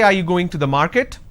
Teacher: are you going to the market then it's a rising tone